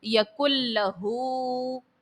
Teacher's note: نون ساکن کے بعد لام ہے اور نون ساکن کے بعد لام جو ہے یہ حرف یرملون کا ہے اور لام جب آئے تو ادغام بلا غنہ ہوتا ہے، یہاں پر ادغام کا قاعدہ تو لگے گا لیکن غنہ نہیں کریں گے۔